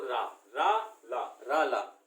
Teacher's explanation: अब दंत मूल, मतलब दांत से भी और मुख से भी, तो रा ला, तो दांत भी चल रहा है और हमारा मुख भी चल रहा है, तो रा और ला, इनका उच्चारण दंत मूल से होता है